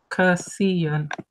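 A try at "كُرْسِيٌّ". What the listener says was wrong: It's not kur, it's kur. It's the Arabic ra, which I struggle to pronounce myself. So it's hada kursiyun.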